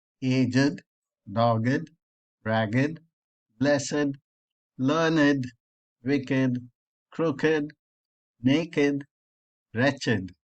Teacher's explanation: that are exceptions to the pronunciation rules that we just saw the ed is pronounced as id in some adjectives